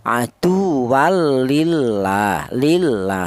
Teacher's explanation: lam jalalah tersebut dibaca tarkik atau dibaca tipis